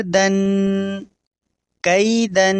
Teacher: دوسرا حرف تنوین میں سے ہے اور تنوین کے آخر میں ہم غنہ کریں گے